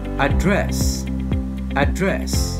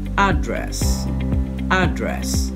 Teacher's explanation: In American English, the word will be pronounced address, address, with stress on the first syllable.